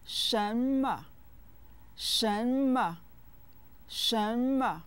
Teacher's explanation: with the second and neutral tones